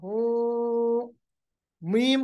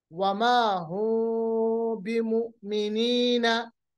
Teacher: मीम को अदा करते वक्त दोनों होठों के खुश्की वाले हिस्से को नरमी से मिलाकर गुन्ना के साथ अदा करेंगे, यानी आवाज जो है मुंह में ही रहेगी और दोनों होठों को पूरी तरह से हम नहीं मिलाएंगे, मुलायम तरीके से मिलाएंगे ताकि आवाज जो है वो मुंह में ही रहेगी। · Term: इख्फा